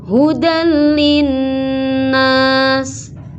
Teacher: Hudan linnas, ini ada tanwin, ada suara nun mati. Sebenarnya tanwin itu kan suaranya nun mati, tapi seolah-olah tidak ada, langsung ke lam. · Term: idgham bila gunnah